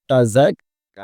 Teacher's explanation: তা জবর তা, ঝা কাফ জবর ঝাক, তাযাক, কাফ খাড়া জবর ক্যা, এক আলিফ টান হবে